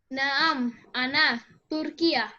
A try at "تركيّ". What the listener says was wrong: Turkiyun or Turkey. You need to stop with the ya. If you say Turkiya, if you say Turkiya, then you've added a ta marbuta at the end because you are stopping at the ta. Okay, so we do not want to stop at the ta.